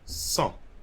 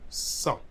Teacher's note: I'm not pronouncing the T.